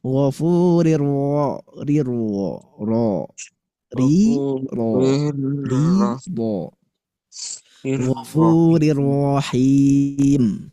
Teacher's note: ro bertasydid fathah harus dibaca tebal atau tafkhim. Jangan sampai sama.